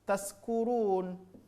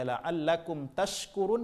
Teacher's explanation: Wastul lisan, tengah-tengah lidah nempel ke tengah-tengah langit-langit atas. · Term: huruf shin